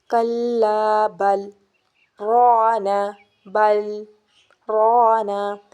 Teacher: جی، وقف میں ہوتا ہے کہ ٹھہرنا ہوتا ہے، آواز سانس توڑ دینی ہوتی ہے، لیکن سکتہ میں آواز بند کر کے یعنی کہ آواز بند کر کے سانس جاری ہونا چاہیے